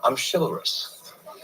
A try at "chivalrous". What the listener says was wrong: Dude, it's pronounced chivalrous. Chivalrous. Chivalry, chivalrous, not chivalrous. You're saying the word silver, but replacing the S with a CH.